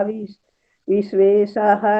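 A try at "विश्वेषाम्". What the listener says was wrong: सुना, विश्वेश, शाह के ऊपर बिंदी है, विश्वेशाम, वो दूसरी तरह लिखा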